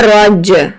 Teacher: ایک تو آپ کو جیم کو بھی جھٹکا دینا ہے کیونکہ یہ حرف قلقلہ ہے